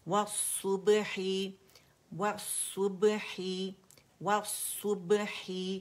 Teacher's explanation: وَالصُّبْحِ، و and سو، واو باریک ہے، سو موٹا ہے، اس کو واو کو ہم نے موٹا نہیں کرنا · ये लाम जो है शमसी लेटर के अंदर मर्ज हो गया, इसलिए वो मुशद्दद नज़र आ रहा है, ये लाम शमसिया है, ठीक है।